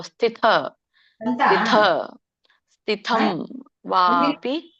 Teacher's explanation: ಸ ಕೆ ತವತ್ತಿದೆ ಹಾಗಾಗಿ ಇಲ್ಲಿ ನೋಡಿ ಸ ಕೆ ಅಲ್ಪಪ್ರಾಣ ಅಂತ ಹೇಳ್ತಾರೆ ದೊಡ್ಡ ಥ ಇದೆ ಮಹಾಪ್ರಾಣ ಅಂತ ಹೇಳ್ತಾರೆ ಸ ಮೊದಲು ಕೇಳಿಸಬೇಕು ಅಲ್ಪ ಪ್ರಮಾಣದಲ್ಲಿ ಥ ದೊಡ್ಡದಾಗಿ ಕೇಳಿಸಬೇಕು